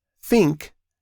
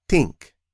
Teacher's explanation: instead of the unvoiced th sound, some people use a t sound. So, think can sound like tink.